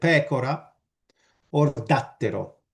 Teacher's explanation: you also get anti-penultimate stress that is less default, it's less common